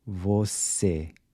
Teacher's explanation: Notice how closed your mouth is when you say the se in você. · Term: closed E